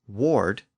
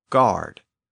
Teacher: people in Paris and central France had a problem with that initial W sound so they used a g sound in its place in that dialect Ward became guard and Warden became Guardian again